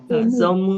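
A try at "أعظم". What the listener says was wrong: Salah, ini ain ya.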